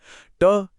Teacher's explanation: ट ठ बोलने के लिए जीभ मुड़कर मुंह की छत तक जाती है। यह है मुरधन्य।